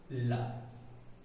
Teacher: ला का उच्चारण करने में जो जीभ है, हमारी जिह्वा है, वो पहले कर्ली हो जाती है, कर्ली होने के बाद हवा जो है वो दोनों किनारों से निकलती है, इसलिए इसको बोलते हैं पार्श्विक।